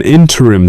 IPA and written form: ˈɪn.tər.ɪm (Interim)